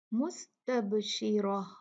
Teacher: را ہیوی ہوگا کیونکہ اس پہ فتحہ ہے · نکالیں گے، مستب، با ساکن ہے، قطب جدین میں سے ہے، جب با ساکن ہوتا ہے اسے ہلا کر اس کے مخرج سے پڑھا جاتا ہے